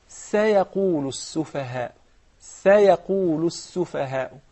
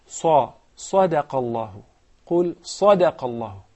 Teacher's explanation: So the sin is very thin, while the qaf, the sad, the ta, the dha are very heavy and fat letters.